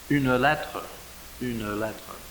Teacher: normally you just pronounce that une, the e is silent. But to make the line, that becomes a separate syllable, to make the full 12 count. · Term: poetic pronunciation